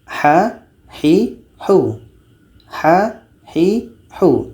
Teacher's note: ha ini di tengah-tengah tenggurokan